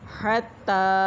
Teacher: تا کے اوپر کھڑی زبر ایک الف کے برابر لمبا کریں گے، ہا کو باریک